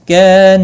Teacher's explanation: الف مدہ ہے ایک الف کی مقدار کے برابر کھینچ کر پڑھیں گے